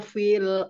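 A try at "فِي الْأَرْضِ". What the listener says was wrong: Turunin lagi, turunin lagi. Lidahnya, jangan naik-naik. Fil ardi ya, fil ardi.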